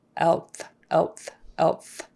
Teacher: your L is going to be produced lower, probably in the middle, so that you can then get the TH sound